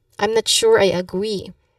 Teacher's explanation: a gentle tone and then you stress on the word agree. So basically you say it again as I'm not sure, I agree.